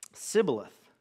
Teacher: because they couldn't pronounce the sh sound, they'd say, Sibboleth.